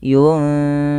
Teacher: Nun mati ketemu fa di sini harus disamarkan karena ada bacaan dinamakan dengan ikhfa.